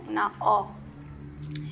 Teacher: Esta vocal era una O, pero abierta